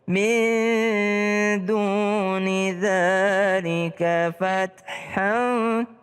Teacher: Min duni dzalika fathan, ta berdesis sedikit.